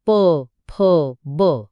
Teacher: दोन्ही ओठांचा वापर करून निर्माण होणारे ओषठ्य